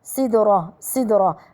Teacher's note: الدال مقلقلة الراء مفخمة